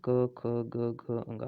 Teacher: क वर्ण जो बोले जाते हैं वो कंठ से होते हैं